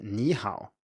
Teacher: When followed by another third tone, the first one is changed into a rising tone, as in ni hao, so it's clearly not pronounced the same way here, even though the label is the same.